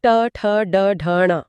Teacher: ट वर्ग उच्चारण स्थान मूर्धा ट ठ ड ढ न इसमें जीभ मुड़कर कठोर तालू को छूती है